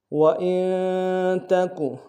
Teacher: وإن میں حمزہ کو نون ساکن کے سامنے لانا ہے، نون ساکن میں غنہ کریں گے